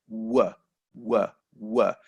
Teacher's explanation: with w, there is no contact between the lips and the teeth. W. All you're doing is making your mouth into a circle.